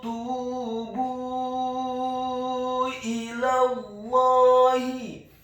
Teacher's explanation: Selanjutnya kata ilallahi, huruf alifnya dibaca tipis, kasroh 1 harokat. Huruf lamnya dibaca tipis, fathah cukup 1 harokat saja. Karena setelahnya langsung disambung huruf lam yang tasydid dan fathah 2 harokat karena harokatnya tegak.